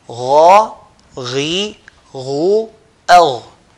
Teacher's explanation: they used to pronounce it with heaviness, full mouth.